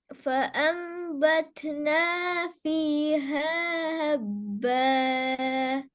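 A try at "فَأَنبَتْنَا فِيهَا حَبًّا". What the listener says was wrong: Third sound நீட்டது போதாது. فيها حبة.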